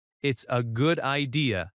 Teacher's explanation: The s connects to a. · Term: linking